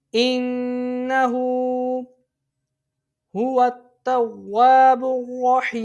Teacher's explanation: جب وقف کریں گے صورت میں نون یہ ساکن میں تبدیل ہو جائے گا، عارضی سکون ہو جائے گا. حروف مد کے بعد عارضی سکون مد عارض اس کو 3 انگلی کے برابر کھینچ کے ہم پڑھیں گے